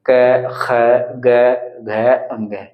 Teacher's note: ये कंठ से बोले जाते हैं ना तो इसलिए इनको यहां पर कंठ व्यंजन बोल दिया जाता है